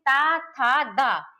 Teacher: ऊपरी दांतों के निकट से होता है इसका उच्चारण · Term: ता वर्ग